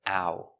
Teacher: Remember the sound ow is two sounds. It's a like apple and oo like boot. Together, Ow, ow.